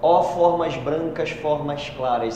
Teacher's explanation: a repetição, né, do fonema A várias vezes, dando essa ideia de abertura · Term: assonância